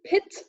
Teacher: in English then we've got the short e as in pit it's half closed its front it's short and the lips spread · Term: short I